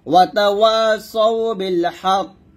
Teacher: তারপর এখানে দেখুন, এখানে আসছে কফ জের কি, এখানে থামলো হবে ওয়াতাওয়াসাউ বিল হক, অর্থাৎ এখানে কফটা সাকিন করতে হবে এবং কলকল করতে হবে